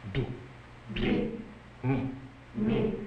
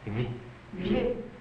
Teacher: the effect of palatalization will be conveyed by the peculiar shape of the tongue, which will follow closely the outline of the palate as if ready to say y or ch.